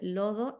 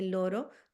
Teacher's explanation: el niño dice lodo en vez de loro porque el sonido de la R no lo tiene, pero siempre va a cambiar ese sonido de la R por la D. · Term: dislalia